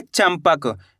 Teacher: इस शब्द के अंदर अपन आधा माँ का उच्चारण कर रहे हैं।